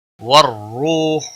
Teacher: کہتو والروح، را کو پیش کی وجہ سے موٹا پڑھیں گے، واو مدہ ہے 1 الف کے برابر کھینچ کر پڑھیں گے، خو کو کھینچنا نہیں۔